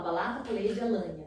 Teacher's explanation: Ele troca o R pelo L, que é caracterizado dentro da fonoaudiologia como troca de líquida